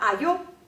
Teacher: this o is a higher /o/ and is not read as a loose /ɔ/